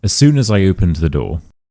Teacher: there's a y sound, right? A y from nowhere.